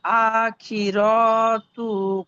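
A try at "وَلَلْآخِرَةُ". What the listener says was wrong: আখির, টান দিচ্ছেন কেন? রর উপরে কদ আলিফ টান আছে।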